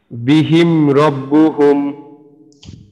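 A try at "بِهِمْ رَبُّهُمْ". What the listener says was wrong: মাশাআল্লাহ, ঠিক আছে।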